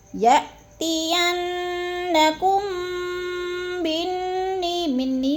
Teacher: یَأْتِيَنَّكُم، کم پہ جو میم ساکن کے بعد میم مشدد آ گیا ہے تو ادھر ادغام شفی ہو رہا ہے، سختی سے جماعوں کے ساتھ غنہ کریں گے